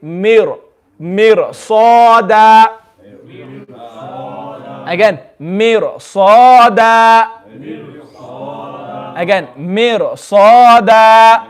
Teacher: Because of this letter sad, which has come after the ra sakin, the ra will also be now full mouth.